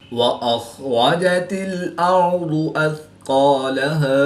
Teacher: خا حروف مستعلیہ میں سے ہے تو پور یعنی موٹا پڑھیں گے۔ را پر زبر ہے تو را کو پور یعنی موٹا پڑھیں گے۔ · را ساکن سے پہلے زبر ہے تو را کو پر پڑھیں گے